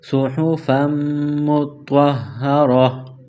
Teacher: جب وقف کریں گے اسٹاپ کریں گے تو دو زبر کی تنوین کو الف سے تبدیل کریں گے، کس طرح وقفا صحفا مطہرہ۔ جب وقف کریں گے اسٹاپ کریں گے تو گول تا کو ہا سے تبدیل کریں گے